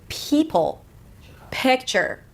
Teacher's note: it's like you're Whispering before you are pronouncing the vowel that comes after the P